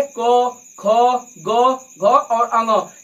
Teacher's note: जो क वर्ग होता है वह कंठ से बोला जाता है